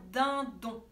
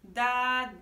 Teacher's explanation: Quand vous dites dindon, la langue, elle vient taper sur les dents 2 fois. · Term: dental